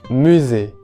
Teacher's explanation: La S entre vocales, hay que recordar que se transforma en la consonante sonora Z.